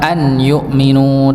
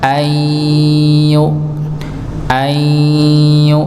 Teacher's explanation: maka bacanya bukan an yukminu tapi ayu ayminu keluarnya dari mana hidung dan mulut dua-duanya keluar ya bukan hanya hidung saja tapi melibatkan mulut juga dua-duanya ya berbeda ketika nun sukun ketemu mim dan nun maka · nun sukun ketemu dengan huruf ya, maka dibaca dengung, idgham bi gunnah, masuk dengan adanya dengung maka bacanya bukan an yu'minu, tapi ayyu'minu. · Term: idgham bighunah